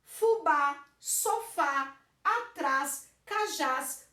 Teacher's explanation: A última sílaba é mais forte, termina em a ou as. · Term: oxítonas